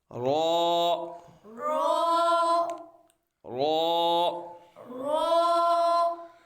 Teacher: यह हरफे राफिया है जबान की नोक और मुकाबिल के तालू से अदा होता है · زبان کی نوک اور مقابل کے تالو سے ادا ہوتا ہے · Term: حروف قرافیہ